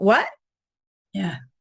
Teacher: you make a stoppage of the air at the glottal area in in sort of in the glottis so those are three · You don't actually make the T, you don't make the articulation of the T sound. Instead, you make a stoppage of the air at the glottal area in the glottis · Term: glottalize that T